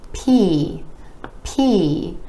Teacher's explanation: the P is another of those air puff sounds, meaning it's made with a tiny puff of air being released